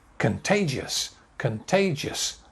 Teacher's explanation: contagious three syllables contagious weak strong weak